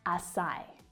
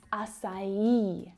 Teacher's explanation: The stress is on, and it's emphasizing the third syllable, or the last syllable